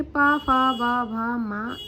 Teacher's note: तो जो ओष्ठ वर्ग है वो जो ओष्ठ है वो पा वर्ग के व्यंजनों के लिए उच्चारण स्थान है